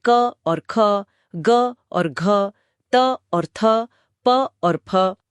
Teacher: Aspiration. कई व्यंजनों में एक अतिरिक्त हवा का झोंका होता है। एक पफ ऑफ ब्रेथ जिसे महाप्राण कहते हैं।